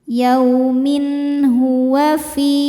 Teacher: Min idhar halqi karena tanwin kasrah menghadapi ha, dibaca tanwinnya jelas.